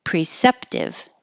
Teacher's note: this pre doesn't have to sound like pre it can sound like prith but the important part is that you have the pr together